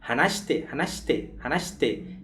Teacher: Então, a gente faz su, vai virar shite, shite. E vejam que a gente fala, quase não pronuncia o shi direito, né?